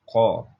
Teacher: pangkal lidah. dengan langit-langit atas